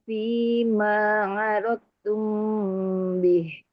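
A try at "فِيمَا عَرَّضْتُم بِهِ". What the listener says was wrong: Roknya bertasydid.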